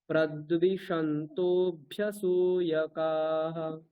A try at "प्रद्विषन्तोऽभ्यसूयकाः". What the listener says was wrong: আবার প্রদ্বি দীর্ঘ বলছেন তো, প্রদ্বি দীর্ঘ হয়ে যাচ্ছে, প্রদ্বিষন্ত